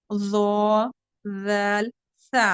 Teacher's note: जबान हुरूफ लिस्विया कहते हैं इनको, लिस्विया। जबान की नोक जब सनाया उलिया के किनारे से लगे तो ये हुरूफ अदा होते हैं